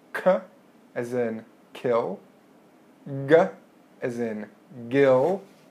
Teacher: Going just behind the hard palate to the soft part, that's your velum, and sounds made at that part of your mouth are called the velar sounds.